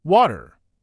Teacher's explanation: An American speaker may pronounce it more like Washingtoner, while a British speaker may pronounce the T more clearly